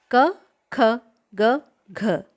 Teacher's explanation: इन सब का उच्चारण स्थान कंठ होता है, इसलिए इनको कंठ्याः कहते हैं।